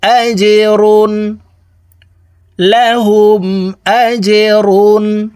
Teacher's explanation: জিম কলকলার হরফ নিচের দিকে ধাবিত করে ধাক্কা দিয়ে উচ্চারণ করতে হবে